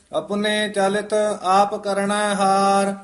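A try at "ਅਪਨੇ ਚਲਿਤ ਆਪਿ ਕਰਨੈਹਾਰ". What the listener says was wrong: ਇਹ ਚਲਿਤ ਨਹੀਂ ਕਹਿਣਾ, ਪੋਲਾ ਹੀ ਬੋਲਣਾ ਹੈ।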